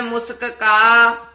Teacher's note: ਮੁਸਕ ਦੋਵੇ ਕਕੇ ਬੋਲ ਨੇ ਆਮ ਕਈ ਵਾਰ ਇੱਕ ਕਕਾ ਰਹਿ ਜਾਂਦਾ ਮੁਸਕਾ ਬੋਲ ਜਾਂਦੇ ਹਨ